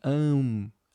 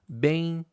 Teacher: É decrescente necessariamente porque esse m e esse n aqui eles acabam marcando uma nasalização, né? Então eles levam você a fechar a boca, né? O movimento ele é de am, que é da mais forte pra mais fraca, é decrescente e é nasal. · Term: ditongo decrescente nasal